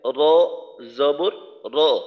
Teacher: র এর মাখরাজ হলো জিহ্বার আগার পিঠ তার বরাবর উপরের তালুর সঙ্গে লাগাইয়া